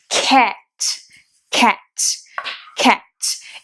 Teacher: ele na verdade, ele é um meio a meio entre um A e um E